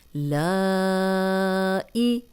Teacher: اس لیے ہم نے 4 حرکات لمبا کیا کہ الف مدہ کے آگے حمزہ تھا